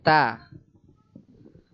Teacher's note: Jadi ta itu adalah lidah mengenai tempat tumbuhnya gigi.